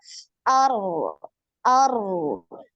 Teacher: Jadi getaran sekali, suaranya ngalir.